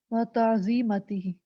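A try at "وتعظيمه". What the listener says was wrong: یہ مجھے کریکٹ کرانا تھا, یہ تعظیمتی نہیں ہے, و تعظیمہ.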